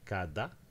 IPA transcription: kada